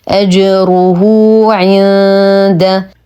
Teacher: لدينا نون ساكنه وبعدها حرف الدال الحكم اخفاء حقيقي مع غنه كامله